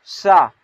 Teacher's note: सा जब बोलें क्या, मुख से हवा बाहर निकलता है और सीटी की तरह निकलता है। बोले सा नहीं, हल्के सीटी, फिर सा, फिर हा यानी कि मुख से बाहर का हवा का बाहर निकला और हल्की सीटी की तरह निकल रहा है।